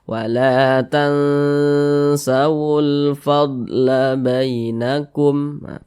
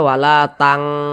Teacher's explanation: maka cara membacanya disamarkan kemudian juga didengungkan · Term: ikhfa Hakiki ausat